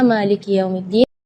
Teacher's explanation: ketika kita membaca Maliki kita perhatikan Kaf kasrah di huruf Kaf harus kasrah yang sempurna